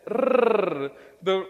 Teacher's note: The rrr, the rolled r, does not exist in the English sound database.